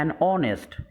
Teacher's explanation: ये भी एच यानी कॉन्सोनेंट लेटर से शुरू हो रहा है, वावेल से शुरू नहीं हो रहा है, लेकिन जब हम तलफ़ुज़ करते हैं तो ओ से तलफ़ुज़ करते हैं और उसमें वावेल साउंड से ये लफ्ज़ शुरू होता है